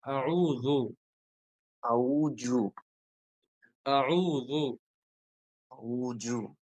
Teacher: আউজু মানে জিহ্বার আগাটা হচ্ছে দাঁতের মধ্যে লাগবে আগাটা লাগবে হ্যাঁ আপনি যদি জু বলেন তাহলে জিহ্বার মধ্যখানটা লাগে